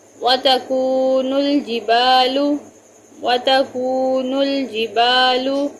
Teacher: با کو لمبا کیا الف کی وجہ سے، کاف کو تھوڑا کھینچا واو ساکن کی وجہ سے، باقی سب پر زبر اور پیش ہیں اور ان کو زیادہ لمبا نہیں کرنا۔